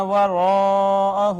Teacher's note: مفتوح، یا لین، الف مدہ، اس کے بعد واو مدہ ہے، را کے اوپر پیش، را کو پور کر کے پڑھا ہم نے ، پھر الف مدہ ہے، پھر مد متصل، اور واو المدیہ